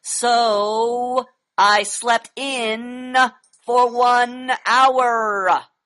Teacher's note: listen to the way I'm reading it and I am extending the vowels the AEIOU sounds